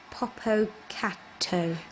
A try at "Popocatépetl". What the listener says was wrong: Te, not to. Te. Te. Te. Popocatépetl. Popocatépetl.